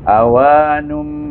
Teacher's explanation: bila baca dengan ikhlab, dia lebih pada bunyi mim.